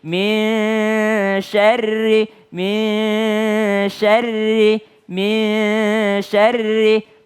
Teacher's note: Tapi kalau nun ketemu dengan sya, mulut kita seakan-akan lebih mudahnya adalah mulut kita seakan-akan sudah mau menyebutkan huruf shin. Sudah mau menyebut sya. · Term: ikhfa